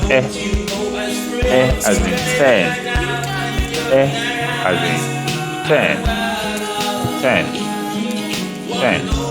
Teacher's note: the lip is not in rounded position, it should be in spread position. So that's spread position.